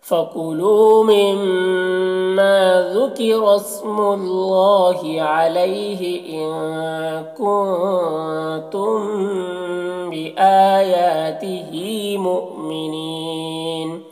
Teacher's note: مؤمنون یہاں پر حمزہ ساکنہ ہے، واو کی شکل میں جھٹکا لگے گا · علیہ میں یالین سے نرم آواز کے ساتھ جلد پڑھیں گے